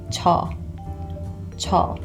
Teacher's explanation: This 저 is pronounced a little bit more like a CH sound as opposed to a J sound.